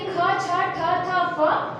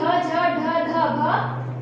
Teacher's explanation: महाप्राण की संख्या 14 होती है। जिन वर्णों का उच्चारण करते समय हमारे अंदर से श्वास वायु बहुत अधिक मात्रा में निकले उसे महाप्राण कहते हैं।